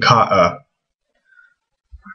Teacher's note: And it's a mix between a vowel mark and an actual letter. So the hamza by itself is something called a glottal stop.